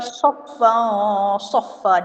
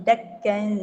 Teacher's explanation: Huruf sad tu dia punya makhraj dia tebal. Jadi kita soffa bunyi dia dengung dia tu bunyi tebal. Tapi kalau dakka dengung dia tu bunyi lembut sebab nak huruf dal. Dal dia lembut, dia tak tebal macam sad.